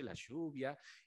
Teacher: Ese pronunciar la Y como una CH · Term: yeísmo